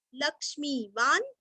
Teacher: लक्ष्मी का क्ष्मी दीर्घ, वान न आधा